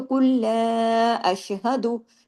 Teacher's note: कुल अगर रोकेंगे तो अशहद अशहद दाल पे फिर कलकला करेंगे क्योंकि हम दाल को के पेश को रोक देंगे और अगर मिलाएंगे तो कुल अशहदु फिर कलकला नहीं होगा